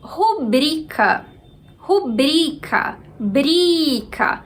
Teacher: Brica. Então, bri é a sílaba mais forte